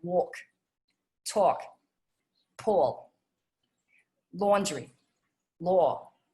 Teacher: we're going to have that nice rounded sound our lips are going to go forward again on things like walk talk pull laundry law